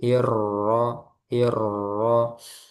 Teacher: nanti dilatih roknya diberi takrir. Hir ada getaran.